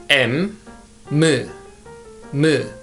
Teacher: Its sound is the same as English alphabet M, M, M. You know, when we pronounce English alphabet M, our nose is vibrated. It is nasal sound.